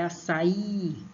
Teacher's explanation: somente o I vai ser acentuado e vai ser a sílaba forte